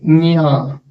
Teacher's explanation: కంఠంలో పుట్టినటువంటి శబ్దము ముక్కు ద్వారా బయటికి వస్తుంది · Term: అనునాసికం